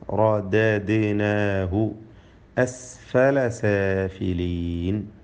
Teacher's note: റദദ്നാഹു, റായിൻ്റെ തഫ്ഹീം, അതുപോലെ ദാലിൻ്റെ ഖൽഖല.